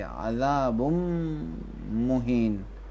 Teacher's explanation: تنوین میم میں کیا کریں گے؟ ادغام کریں گے، میم کو ڈبل پڑھیں گے